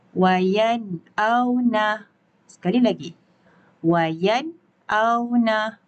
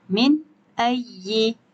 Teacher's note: Maka hukumnya adalah izhar halqi. Dibaca dengan terang, jelas dan nyata tanpa dengung.